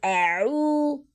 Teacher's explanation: عین جو ہے وہ حلق کے نچلے حصے سے ادا ہوتا ہے. تو جب ہم حلق کے نچلے حصے سے ادا کریں گے تو اس کو ایک کہہ کی ساؤنڈ ہوگی عو.